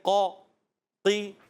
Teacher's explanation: قاف باریک تو نہیں پڑھیں گے ہم مگر تھوڑی سی اس کے اندر کمی آتی ہے ، جب زیر ہوتی ہے نا زیر پستی کی طرف جاتی